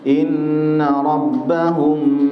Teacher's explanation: Jadi kalau baca inna rabbahum, ini didengungkan dua, disamarkan menjadi dua harokat ikhfa karena ada mim sukun bertemu dengan ba